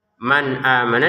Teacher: nun sukun bertemu hamzah kita baca dengan jelas ya. Jangan dengung. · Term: dibaca dengan jelas